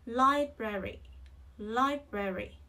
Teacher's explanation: trọng âm rơi vào âm Tiết đầu tiên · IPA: /ˈlaɪbreri/